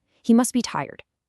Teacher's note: That's DB consonant cluster is kind of a mouthful. So in casual speech, what do we do? We just drop the T sound. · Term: elision